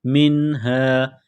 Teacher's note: نون ساکن کے بعد ہا ہے، حروف حلقی ہے تو نون ساکن پر غنہ نہیں کریں گے